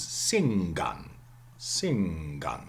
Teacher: the velar nasal is of course there by assimilation